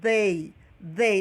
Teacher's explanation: a pronúncia mais comum entre os falantes é essa que coloca a língua entre os dentes.